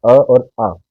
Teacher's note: अ और आ जो हमारे स्वर हैं, इनका उच्चारण करने में हम कंठ का प्रयोग करते हैं। अपने कंठ का अ और आ।